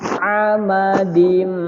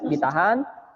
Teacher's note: ada mim bertasydid, ya, maka dia harus masuk ke hidung, berdengung dan agak ditahan, tidak boleh buru-buru. Fi amadim mumaddadah, ini terlalu buru-buru, ya, tapi ditahan.